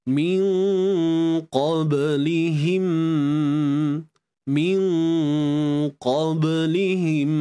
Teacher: Kemudian untuk nama asli dua harakat, min qablihim, nun mati berjumpa dengan qaf, di sini ikhfa hakiki, dengung mesti tebal sebab nun berjumpa dengan qaf yang bersifat tebal. Qaf ni memang tebal, jadi dengung pun ikut tebal.